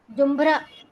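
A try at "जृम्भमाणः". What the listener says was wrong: జుంభ్ర కాదు జృంభ జ కి ఉంటుంది మాత్రం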